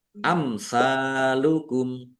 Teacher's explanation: Mim sukun bertemu dengan huruf sa, bacaan idhar safawi, dibaca jelas.